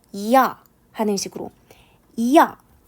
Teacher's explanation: 천천히 발음 할 경우 , 'i' 발음 시 에는 입 모양 이 살짝 평평 해지고 , 이어서 'ya' 가 나옵니다 . 마치 'a' 를 발음 할 때 , 'a' 가 끝 에 붙어서 발음 하는 것 과 같아 요 . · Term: 이중모음